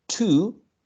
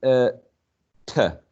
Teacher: So instead of to, the strong form, it can be t, a weak form